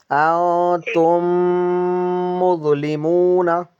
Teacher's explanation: नहीं करना है इनको है ना जुदा नहीं करना होठों को होठ मिले रहेंगे और गुना हम नाक से करेंगे